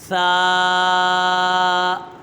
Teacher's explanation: ثا، یہ حرف لثویہ ہے، اس کا مخرج ہے زبان کا سرا اور اوپر کے دانتوں کے اندرونی کنارے سے ادا ہوتا ہے